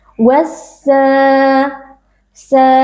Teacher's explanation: dibaca dengan idgham atau dengan mengidghamkan memasukkan huruf lam ke dalam huruf yang ada di depannya yaitu huruf Sin dan Alif Lam asyamsiah ditandai dengan adanya tasydid · Sin dan Alif Lam asyamsiah ditandai dengan adanya tasydid wassa sa terdapat Mad Thobi'i karena ada Alif yang sebelumnya berharakat fathah kita baca panjang dua harakat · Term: alif lam syamsiah